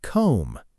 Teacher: Think about comb, C-O-M-B, but we say comb, no B sound at all.